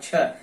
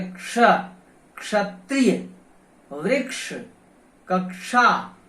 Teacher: तो इसमें क और श मूर्धन्य श की ध्वनि आनी चाहिए, यही इसका शुद्ध उच्चारण है। · इसमें क और मूर्धन्य श का संयोग है मित्रों। इसमें क और मूर्धन्य श यानी षटकोण वाला श जिसको आप कहते हैं, इन दोनों का संयोग है। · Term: क्षत्रिय वाला क्ष